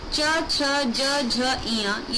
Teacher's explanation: इनको बोलते वक्त जीभ जो है हमारी तालु को टच करती है।